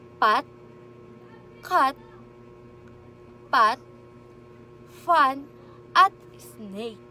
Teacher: So kung mapapansin po ninyo ay wala pong vibration na kung saan ay ang nagpo-produce lamang po nito ang air. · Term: voiceless